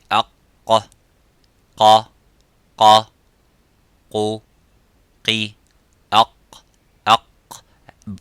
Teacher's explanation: the letter qaf, it has an echoing sound. It is harf mufakham, it is a little bit strong. So when we pronounce the qaf, we try to pronounce it audibly and as it is, qa, by opening slightly the lips vertically and making that sound and echoing by saying qa.